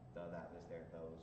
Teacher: Tav is spoken by bridling the tongue between the teeth